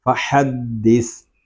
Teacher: دال مشدد میں کلکلا جماؤ کے ساتھ اور وقف میں ہوگا فحدث۔